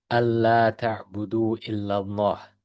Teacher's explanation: the hamza is followed by its noon, which isn't read and is merged into the lam alif that comes afterwards. Okay, so in this case, it's actually written, the noon is actually written in it.